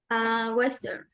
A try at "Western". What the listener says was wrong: Correct, a Western. Great pronunciation.